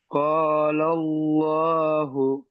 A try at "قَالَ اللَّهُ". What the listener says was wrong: একটু টান দিতে হবে, আলিম মাদ্দা আছে টান দিতে হবে, আলিফ মাদ্দা আছে, আলিফ মাদ্দাকে এক আলিফ পরিমাণ টান দিয়ে পড়তে হয়।